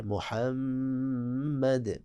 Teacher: اب دیکھیں محمد کے میم پہ بھی شد ہے، تو ہم نے پہلے عرض کیا کہ اس میم پہ بھی آپ نے غنہ کرنا ہے کیونکہ میم مشدد ہے